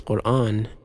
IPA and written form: kɔːrˈɑːn (Quran)